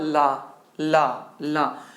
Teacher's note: ला को बोलते हैं हम लोग पार्श्विक व्यंजन भी बोलते हैं, क्योंकि इसके उच्चारण में वायु जीभ के दोनों बगल से निकलती है, अतः अतः अतः इसे पार्श्विक व्यंजन कहते हैं।